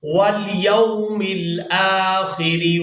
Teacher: را کو باریک ادا کریں گے کیونکہ اس کے نیچے زیر ہے